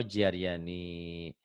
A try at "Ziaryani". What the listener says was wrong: Bukan jiar, Pak. Ziar.